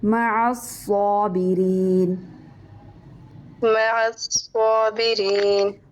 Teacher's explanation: مع یہ باریک ہوگا، صابرین پور ہوگا